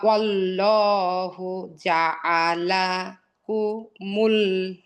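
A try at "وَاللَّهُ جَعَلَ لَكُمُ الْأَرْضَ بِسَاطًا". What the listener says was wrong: আবার একটা লা বাদ গেল। ওয়াল্লাহু জাআলা লাকুমুল আরদা বিসাতা।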